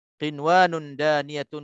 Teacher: Jadi kalau nun mati bertemu dengan waw, kalau kita tak dijelaskan di sini, mungkin kita akan confuse dengan hukum idgham ma'al gunnah ataupun idgham bi gunnah yang dengung, tetapi kerana kan berlaku pertemuan ini dalam satu perkataan, maka tak boleh kita dengung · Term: izhar mutlaq